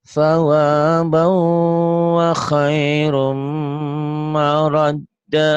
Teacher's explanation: sa kayak cedal sa ujung lidah ke ujung gigi